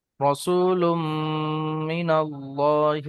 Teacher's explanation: তানবিনের পরে মিম এসছে, মিমটাকে তানবিনের সঙ্গে ইদগাম করে গুণনা করে পড়তে হয়।